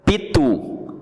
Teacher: Pitu, a sílaba forte é tu.